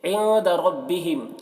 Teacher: نون میں اخفا ہوگا کیونکہ نون ساکن کے بعد دال حروف اخفا میں سے ہے۔ ربہم، را کو پر پڑھیں گے کیونکہ را میں کے اوپر زبر ہے۔